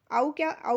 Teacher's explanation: औ कहने में क्या होता है? हमारा जो मुंह द्वार है आधा खुला रहता है तो यह होता है अर्ध विवृत